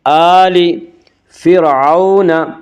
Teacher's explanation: فرعون کی را کو باریک پڑھا جائے گا۔ اس کا قاعدہ یہ ہے کہ را ساکن سے پہلے زبر اور پیش آئے تو را ساکن کو پر پڑھا جائے گا، را ساکن سے پہلے زیر آئے تو را ساکن کو باریک پڑھا جائے گا، یا را ساکن سے پہلے فا کے نیچے زیر ہے اس لیے را ساکن کو باریک پڑھیں گے۔